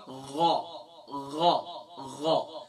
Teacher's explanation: غین کی ادائیگی کہاں سے ہوتی ہے؟ گلے کے ٹاپ سے ہوتی ہے، یعنی کہ ادنی حلق سے ادا ہوتی ہے